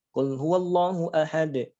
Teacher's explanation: itu qolqolah kubro tidak jadi tebal suaranya tetap saja biasa